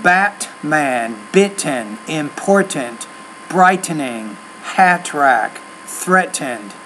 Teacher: native speakers at least in American English we don't really pronounce that t t there